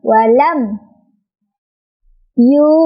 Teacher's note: Mimnya dibaca jelas sesuai dengan makhraj atau tempat keluarnya huruf mim tersebut, yaitu dari dua bibir ya. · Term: izhar syafawi